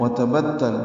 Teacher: وتبتل دونوں تا باریک ہیں، با کو تا سے ملانا ہے